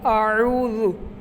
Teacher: او کو ہم لمبا کیوں کر رہے ہیں؟ کیونکہ یہاں پہ واؤ مدہ ہے، اس لیے ہم اس کو لمبا کر رہے ہیں